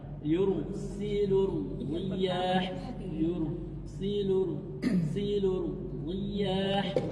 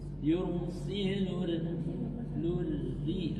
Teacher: tidak ada lagi ro tebal di sini. Langsung tipis.